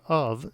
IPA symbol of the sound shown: v